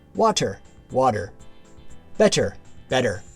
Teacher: T becomes a D sound. In casual speech, T often transforms to a D sound, especially between vowels.